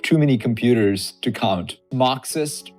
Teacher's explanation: his R sounds aren't consistent. Some are more American English style, some are more Indian English style